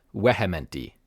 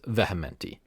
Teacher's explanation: in classical Latin V is pronounced like a w w so it would be weti in classical Latin but eventually